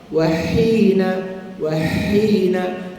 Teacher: Kalau baris bawah wahina, wahina, sempitkan halqum, keluarkan angin, baru baris hi. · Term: huruf halqum ha